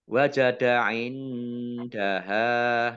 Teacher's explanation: Nun sukun bertemu dengan huruf dal. Bacaan ikhfa. Dibaca samar-samar.